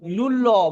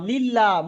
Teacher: লুল্লাহ। মুখটা গোল হচ্ছে। লিল্লাহ মুখটা ছেড়ে যাচ্ছে ফাঁকা হয়ে যাচ্ছে